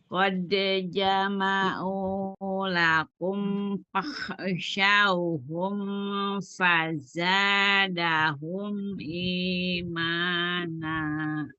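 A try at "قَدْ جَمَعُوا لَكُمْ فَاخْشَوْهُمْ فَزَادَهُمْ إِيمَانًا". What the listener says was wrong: Bibir bawah bagian dalam bertemu dengan ujung gigi seri atas. Fa, bukan bibir atas kunci di atas. Fa, bukan pa.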